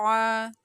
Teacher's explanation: حمزہ کو عین کے ساتھ ملاتے ہوئے عین کی ادائیگی کریں گے، عین کو حلق کے درمیان والے حصے سے ادا کریں گے